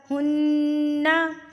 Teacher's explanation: نون مشدد پر غنہ کیا جاتا ہے، یعنی کہ ناک میں آواز کو لے کر جاتے ہیں